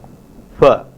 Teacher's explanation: there is a voiceless bilabial fricative fa